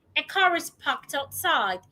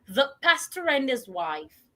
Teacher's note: The right thing for us to do when speaking is to link car and is.